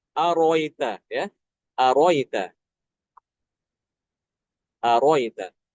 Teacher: Imam Al-Kisai itu membuang hamzah yang kedua.